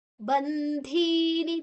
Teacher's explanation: ಧೀ ಮಹಾಪ್ರಾಣ ಧೀ ದೀರ್ಘಾಕ್ಷರ.